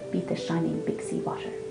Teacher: This poem is in trochaic tetrameter, each line being made of 4 trochees, a troche being a stressed syllable followed by an unstressed syllable.